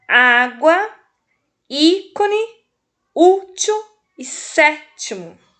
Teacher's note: Tá vendo que a vogal fica bem aberta, o som dela?